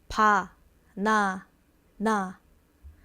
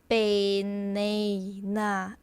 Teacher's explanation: Korean, you take off all that nosey sound. It's just like clean.